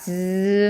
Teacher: 닿았다가 그 브 하는 것처럼 팍 열리는 게 아니라 즈 하면서 살짝만 열려요. 혓바닥이랑 센 입천장이 닿았다가 살짝만 열리면서 거기로 공기가 마찰도 일으키게 됩니다. 그러면 이 소리는 파찰이 되는 거겠죠.